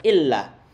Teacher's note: illa lamnya bertasydid, jangan sampai lupa, karena kalau kelupaan nanti artinya lain, merubah arti yang seharusnya dia ditasydid double, tapi kemudian dia dihilangkan tasydidnya menjadi ila.